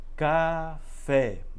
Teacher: a sílaba tônica está na última sílaba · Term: sílaba mais forte